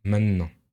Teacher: on va avoir tendance à complètement supprimer le te pour dire maintenant